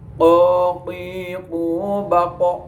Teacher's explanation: Intinya kalau qaf itu lidah dengan anak lidah, lidah dekat dengan anak lidah dan mengarah ke atas.